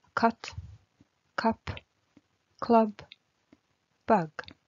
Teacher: U дауысты дыбысы жабық буындарда қысқа A болып оқылады.